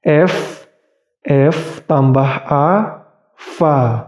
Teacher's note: f f tambah a fa sangat mudah Fa itu posisi yaitu posisi gigi seri atas itu menyentuh bibir bawah yaitu menggigit bibir bawah dengan gigi seri atas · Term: huruf Fa